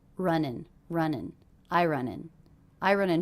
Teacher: those two words are really linked together because we have an ending and a beginning vowel